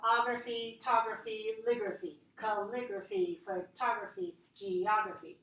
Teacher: I need to put the stress on the syllable just before that graphy.